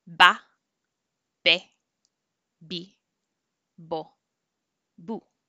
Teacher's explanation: The V and the B do not differentiate in Spanish. They both sound like a B, like a B sound.